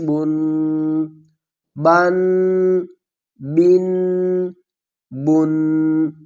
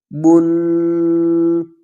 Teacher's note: جو تنوین کی آواز ہے وہ ناک سے نکلے گی، جیسا کہ بن، جو تنوین ہے اس کی آواز ہم ناک میں لے جائیں گے، ناک سے ادا ہوگی۔